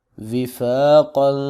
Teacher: قاف حروف مستعلیہ میں سے ہے اور اس کو موٹا کر کے پڑھیں گے